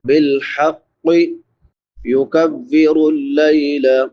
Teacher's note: لام کے بعد یا لین ہے، یا ساکن ما قبل فتحہ یعنی زبر ہے، اس کو نرمی سے ادا کریں گے۔